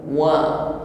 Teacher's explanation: Mengucapkan wa dengan makhraj syafatan, bibir atas bawah dihimpun ke depan. Jangan anteng bibirnya.